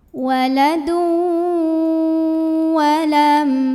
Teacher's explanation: karena ada tanwin dhammah yang bertemu dengan huruf waw, maka tanwin dhammahnya lebur ke huruf waw ya. Jadi ini bukan waladun tapi waladu, masuk langsung ke waw dan kita tahan dengung. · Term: idgham bi gunnah